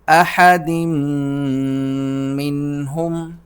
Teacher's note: نون ساکن ہے لیکن ہم اس پر اخفا نہیں کر رہے کیونکہ اس کے بعد حرف حلقی ہا موجود ہے